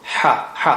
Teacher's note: ha is from the middle of the throat. Ha, ha, soft sound.